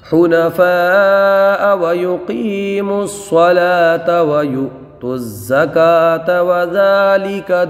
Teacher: قاف کو مستعلیہ ہے برابر نکال کر کے پڑھیں گے، یعنی نکالیں گے بھی اور پر بھی پڑھیں گے